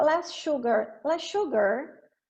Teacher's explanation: Less sugar, eu posso juntar isso aqui e fazer um som só. Então, os dois S's do less, eles vão desaparecer.